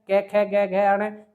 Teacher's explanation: जो क वर्ग होता है ये आपका कंठ ध्वनि का वर्ग होता है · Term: कंठ ध्वनियां